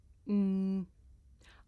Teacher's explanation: this is a consonant sound it's pronounced hmm I make this sound by closing my lips and letting the sound come through my nose